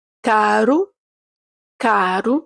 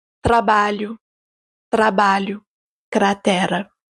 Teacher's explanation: Donc ce son, vous allez le retrouver premièrement lorsque le R est tout seul entre deux voyelles, caro, caro, ou bien deuxièmement lorsque le R est tout seul derrière une consonne, trabalho, trabalho, cratera. Attention, ce R roulé est vraiment très léger. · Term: R légèrement roulé